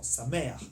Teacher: The accent is on the second vowel.